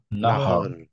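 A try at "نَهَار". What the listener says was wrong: র হেভি, হ্যাঁ, নাহাও। হাও। নাহাও। গুড, র হেভি। নাহাও র হেভি। কেন র হেভি? কেন র সুকুন করলে তার আগে ফাতহা, রাইট?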